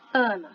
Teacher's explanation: esse A do começo, ele está bastante fechado e nasalizado por causa do N.